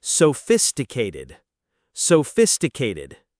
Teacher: Notice the stress on the second syllable and that ph makes an f sound.